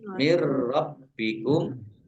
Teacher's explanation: Nun sukun bertemu dengan huruf ro, bacaan idgham bila gunnah masuk dengan tidak mendengung. Tapi roknya dibaca double ya.